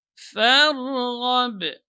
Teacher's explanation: Fa tipis ya, dan ra-nya tebal karena sebelumnya fathah